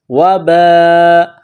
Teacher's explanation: یہ لمبی مد ہے، 4 الف کی لمٹ میں کھینچنا ہے